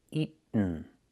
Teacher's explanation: Make the stop T and fall to the N.